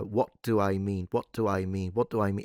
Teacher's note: What's happening is he's got this glottal stop, but the stop has actually deactivated the voice for the beginning of the word do. So he's got an unaspirated T, which is close to a dental T, not do where I've got d.